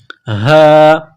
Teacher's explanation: یہ چشمے والی گول ہاں ہے، صرف منہ سے ہوا نکالنے کی طرح اس کو پڑھیں گے